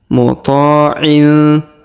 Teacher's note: Huruf ma di sini berharokat tasdid dan di awal ayat berwarna merah. Tapi karena kita tidak menyambung dengan ayat sebelumnya, maka huruf ma-nya tidak perlu ditasdidkan